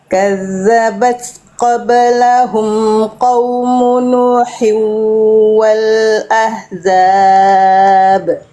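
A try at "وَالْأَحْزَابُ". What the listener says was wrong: Hanya kurang pedas, kurang berbisik, kurang tegas lagi sedikit hanya. Kurang duduk makhrajnya ya. Wal ahzab.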